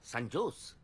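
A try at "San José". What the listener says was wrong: সান হোসে। সান হোসে। হ্যাঁ, সান হোসে। জের উচ্চারণটা এইচ এর মতো হবে, সান হোসে।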